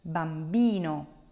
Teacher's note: the accent is not on the first syllable, but it's on the second to last